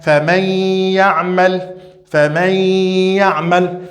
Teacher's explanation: Praticamente a letra Nun vai sumir. O que vai substituir a letra Nun é a nasalização. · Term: idgham bi ghunna